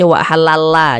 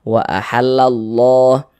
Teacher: sininya Nih misalnya ada harakat dah lafaz Allahnya juga dibaca tebal Jadi huruf lam yang di tengah nih huruf lam jalalahnya nih dibaca tebal